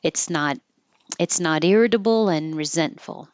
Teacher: Don't say the T in resentful.